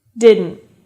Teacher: when you say the word didn't there's a stop T at the end meaning you don't hear /t/ sound